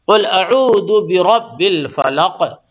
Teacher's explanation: یہ قاف پہ قلقلہ ہوگا کہ قاف پہ جزم آ گئی نا